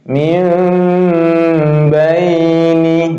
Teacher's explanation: Mengganti bunyi nun sukun atau tanwin ketika bertemu huruf ba menjadi bunyi mim sukun. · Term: iqlab